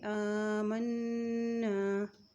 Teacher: الف کے اوپر کھڑی زبر ہے، اس کو تھوڑا سا ایک حرکت ہم لمبا کر کے پڑھیں گے